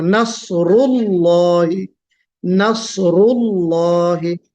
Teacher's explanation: ہم جب لام کو پر کر رہے ہیں تو اسٹارٹنگ سے ہی پر کرنا ہے ہم کو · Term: لام کی جو تفخیم